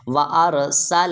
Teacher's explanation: یہاں سین سے سیٹی کی آواز آنی چاہیے، کوشش کریں سین سے سیٹی کی آواز نکالیں